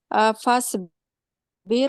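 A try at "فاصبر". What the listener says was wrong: سواد اپنا موٹا کریں پلیز.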